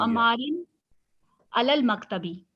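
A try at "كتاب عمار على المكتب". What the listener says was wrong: Very good, किताबु अम्मारिन अलल मकतबी। Excellent.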